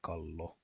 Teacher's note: the double L is always pronounced as a long L sound